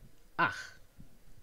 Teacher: It also has a velar voiceless fricative, as in ach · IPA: [ax]